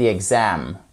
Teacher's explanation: on a la seconde syllabe qui est accentuée. Pas la première, c'est pas exam, c'est exam. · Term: accent tonique